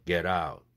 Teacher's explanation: get out 링크돼서 t가 플랩되죠